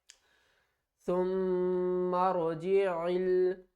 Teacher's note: میم مشدد ہے تو غنہ کریں گے